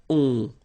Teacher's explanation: Remember, you don't pronounce the final s, you get the on sound. Okay? Nasal in your nose, on. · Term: nasal on